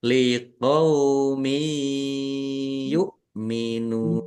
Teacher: Kasr tanwin bertemu dengan huruf ya. Bacaan idgham bighunah masuk dengan mendengung. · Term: idgham bi gunnah